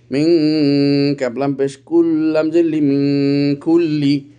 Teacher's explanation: নুন সাকিনের পর কাফ এসেছে, ইখফা হয়েছে, এই জন্য এখানে গুন্না হচ্ছে।